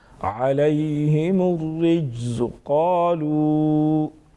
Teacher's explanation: جیم حروف قلقلہ میں سے ہیں. یہاں پر ساکن بھی ہیں اس میں قلقلہ کریں گے یعنی آواز میں جنبش پیدا ہوگی. وضاحت کے ساتھ جیم کو ادا کریں گے.